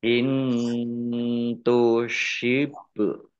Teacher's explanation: bacaan kolkolah, dibaca memantul, ditampakkan pantulannya